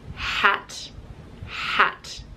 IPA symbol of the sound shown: h